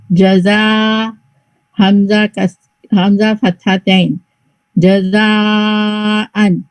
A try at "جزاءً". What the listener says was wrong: جی لیکن یہ لیٹر جو ہے نا یہ زا ہے زال نہیں تو یہ زا. اور پھر اس کو 4 حرکہ لانگ جزاءن